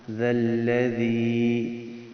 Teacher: دو زال اکٹھے آ رہے ہیں، دونوں کا خیال کریں گے. نرم پڑھنا ہے، سخت نہیں پڑھنا